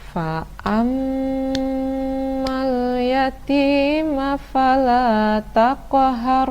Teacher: tasydid dibaca singgah lalu saja padahal disana berdengung Oleh karena itu bacaannya adalah berdengung dan dilamakan sekitar tiga ketuk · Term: ghunnah musyaddadah